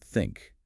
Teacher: the soft, airy sound in the word think